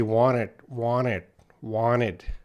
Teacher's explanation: i say wanted wanted without that t